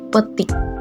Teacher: vokal I tinggi bawah depan tak bundar pada kata petik.